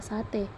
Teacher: vokal e Tengah atas depan tak bundar